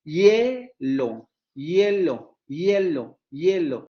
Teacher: Y si ustedes se dan cuenta y pronuncian la palabra hielo, se darán cuenta que el elemento más marcado es el segundo, hielo. El acento o la tonicidad, la marca de tonicidad recae en el segundo momento articulatorio del diptongo.